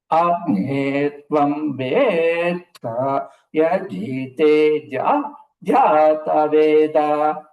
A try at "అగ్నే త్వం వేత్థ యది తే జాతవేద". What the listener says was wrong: మీ అంత బాగా చెబుతున్నారు కదా, మొదట్లో అకారానికి ఉదాత్తం చెబుతున్నారు. అగ్నే అంటున్నారు మీరు. అగ్నే అగ్నే త్వం వేత్థ. అగ్నే త్వం వేత్థ యది తే జాతవేద.